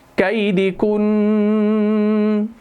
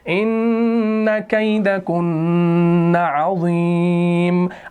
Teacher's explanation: نون مشدد میں ویسے ہی غنہ ہوتا ہے، لیکن رکنے کی صورت میں بھی اس کو آگے لے کر جانا ہے تاکہ تشدید ادا ہو جائے، دو نون ادا ہو جائے. ایک نون ساکن، ایک نون اپنا متحرک، دو نون کو ملا کر ایک نون شد کے ساتھ.